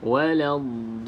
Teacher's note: Selepas do ada ombak, kan? Ada ombak, selepasnya ada huruf yang bersabdu, iaitu pada huruf lam. Maka perlu baca 6 harakat.